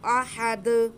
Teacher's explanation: اس کے بعد دال ساکن ہوگا تو دال پہ قلقلہ ہوگا۔